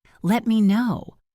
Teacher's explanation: Listen to the connection. Let me know. It almost sounds like one word.